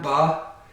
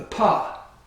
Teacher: the vocal cords will vibrate before the air is released you can feel this if you put your fingers on your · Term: voicing